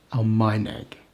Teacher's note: The stress is on the penultimate syllable.